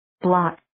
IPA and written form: blɑːk (Block)